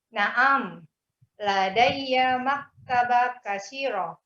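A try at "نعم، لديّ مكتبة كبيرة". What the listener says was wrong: Kabirah. Bukan kasirah, kabirah. Kabirah, bukan kasirah. Kabirah.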